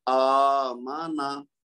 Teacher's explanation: میم اور نون کو نہیں لمبا کریں گے کیونکہ ایک ایک حرکت ہے، لیکن حمزہ کے اوپر کھڑا زبر ہے تو اس کو پڑھیں گے